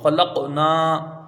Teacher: قاف میں جو قلقلہ ہوگا وہ متوسط درجے کا ہوگا